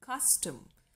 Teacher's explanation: it is the first syllable cuss which is stressed and the second syllable tum is shortened is not so long and so it is unstressed · it is a stressed syllable followed by an unstressed syllable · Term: troche